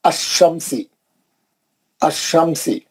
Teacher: شمسی حرف کے اوپر تشدید رہتی، اور تشدید میں سے جو ساکن حرف نکلتا انہیں کیا کرتا، لام کو گرا دیتا، کیونکہ لام خالی ہے، لام خالی ہے یہاں پہ، اس لیے لام نہیں پڑے جا رہا.